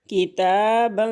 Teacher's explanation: काफ ज़ेर की, ता खड़ी ज़बर ता, बा अलिफ दो ज़बर बं, किताबं, खड़ी ज़बर को एक अलिफ के बराबर पढ़ना है, तनवीन के ऊपर गुन्ना करना है नाक में